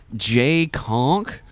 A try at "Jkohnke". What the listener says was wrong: Chukon. J is silent. It's